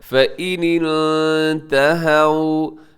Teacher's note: فَإِنِ انْتَهَوْا، یہاں نون ساکن ہے اور نون ساکن کے بعد تا ہے، اب یہاں اخفا کیجیے گا، فَإِنِ انْتَهَوْا، ہاں کے اوپر زبر ہے اور واو ساکن ہے، تو اس کے مطلب یہ واو لین ہے، نرمی سے پڑھیے گا، اس کو لمبا نہیں کرنا آپ نے۔